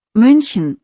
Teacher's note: München hat ein Ü, der Mund ist vorne